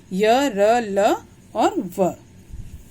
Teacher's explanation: जिन व्यंजनों को स्वर और व्यंजनों के बीच की स्थिति में बोला जाता है, उन्हें अंतस्थ व्यंजन कहते हैं। इन्हें बोलने में जीवा मुख के किसी विशेष भाग को स्पर्श नहीं करती। ये 4 हैं, य र ल और व।